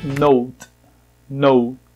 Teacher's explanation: A sílaba tônica é a primeira e tem o T bem sutil.